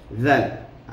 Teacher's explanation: Zal dekat kedua bibir, keluarkan sikit. Zal berada di lidah hujung. Kita keluarkan lidah itu.